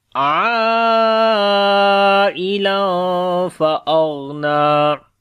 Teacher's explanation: حروف مدہ کے بعد حمزہ اسی ورڈ کے اندر آ گیا تو مد متصل ہوگی جس کو 4 سے 5 سیکنڈ لمبا کریں گے · تنوین ہے اس کے بعد فا آ گیا اخفا کریں گے